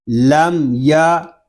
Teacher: میم ساکن میں اظہار شفوی ہوگا، یہاں غنہ نہیں کریں گے